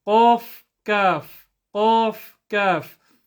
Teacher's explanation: Qaf is further back at the top of the palate towards the soft part. Kaf is a bit forward.